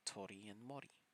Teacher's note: it kind of sounds like a very short version of rolling your tongue letting it only hit the roof of your mouth once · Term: The R sound